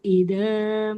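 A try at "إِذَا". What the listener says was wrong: Iza, coba huruf zalnya jangan ida, tapi iza.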